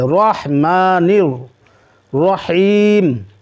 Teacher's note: راح جب پڑھیں گے تو منہ گول ہوگا، راح ہا کو حلق سے نکالیے